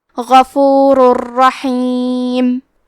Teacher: ہم تنوین کو را میں ملا کے بغیر غنہ سے لیکن تشدید کے ساتھ یہ حکم کو ادا کریں گے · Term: ادغام بغیر غنہ